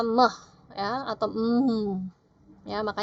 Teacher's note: neso itu adalah ketika bunyi itu easel ketika udara gitu ya udara itu dia mau keluar dari paru-paru Tetapi dia tidak bisa keluar dari apa rongga mulut karena bibirnya tertutup